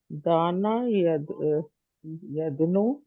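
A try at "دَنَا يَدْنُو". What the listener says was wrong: دنا دنا یدنو، دنا یدنو، دانا یدنو نہیں، دنا یدنو.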